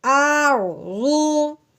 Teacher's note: رو کو ہم نے پر کر کے پڑھنا ہے، یعنی موٹا کر کے پڑھنا ہے، کیونکہ رو کے اوپر تو جیسا یعنی ساکن ہے، جب رو کے اوپر کوئی اعراب نہیں ہے تو اس سے پچھلے والے حرف کو دیکھتے ہیں۔